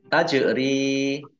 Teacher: jin sukun bacaan kolkolah, dibaca memantul, ditampakkan pantulannya.